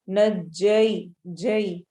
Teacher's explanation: या साकिन और उससे पहले फतहा आ रही है तो या लीन होगी , नज्जयनाकुम में हम मीम को मीम से मिलाएंगे, मिन आलि